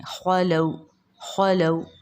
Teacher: یہاں پر واو لین ہوگا، واو ساکن سے پہلے زبر ہے تو نرم معروف آواز کے ساتھ ہم اس کو جلدی پڑھیں گے۔